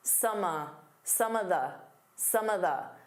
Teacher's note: Instead of saying of, you can just do an unstressed uh